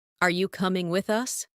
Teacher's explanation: Rising tone for question.